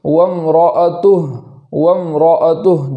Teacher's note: اگر وقف کرتے ہیں تو اس ہا کو جزم کر دیں گے، جیسے وامرأتہ، وامرأتہ جزم کے ساتھ پڑھیں گے۔